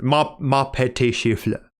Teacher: It's still trying to make the last letter sound silent in as many occasions as it can get away with. But in the case of fleur, you have to end with like a slight G sound.